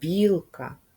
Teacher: у слові білка перший звук М'який приголосний б